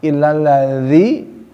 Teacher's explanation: bukan lazi tapi lidahnya digigit ya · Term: makhraj